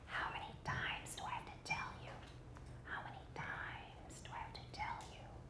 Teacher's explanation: even if you're whispering you can hear a longer vowel you can't hear the pitch if you're whispering